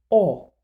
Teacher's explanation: the aperture is also different o has a much smaller opening at the front contrasted with lots of space at the back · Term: open o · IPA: ɔ